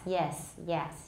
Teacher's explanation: the tongue is a little lower for yes